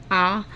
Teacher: जिसमें मुख अधिक खुला हुआ रहता है, ज़्यादा खुला हुआ रहता है। जैसे आ, जब हम बोलते हैं आ तो हम खुद यह अनुभव कर रहे हैं कि मुख हमारा ज़्यादा खुला हुआ है। विवृत स्वर केवल एक ही है, वो है आ।